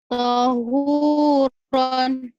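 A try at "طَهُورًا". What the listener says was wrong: ini pendek, Bu. Tonya pendek.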